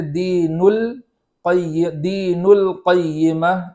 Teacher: القیمہ میں جو لام ساکن ہے اس پر زبر نہ ہو جائے اس بات کا خیال کریں گے، اس طرح نہیں پڑھیں گے دین ال بلکہ دین القیمہ اس طریقے سے پڑھیں گے۔